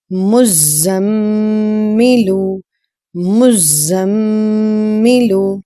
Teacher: This is Mim Mushaddad, and before that we have done Noon Mushaddad. Both of them, they have Gunna inside. There is a nasalization sound